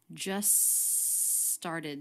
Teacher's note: just just we tend to drop the t just started so the two words linked together with a single s sound